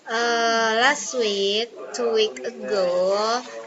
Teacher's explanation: the speaker lengthens vowel in words like week and go. In phonetic, this show vowel lengthening which affect how the words sound and where the stress is.